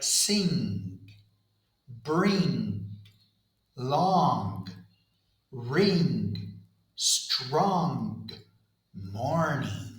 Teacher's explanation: The sound is voiced. So the throat vibrates the whole time. · we do not need to release the tongue. Instead, the air flows out through the nose. I lower the soft palate, the volume, so air can escape through the nasal cavity. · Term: NG sound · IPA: /ŋ/